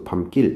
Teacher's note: 밤이라는 낱말과 길이라는 낱말이 결합돼서 밤길, 된소리가 나고 있죠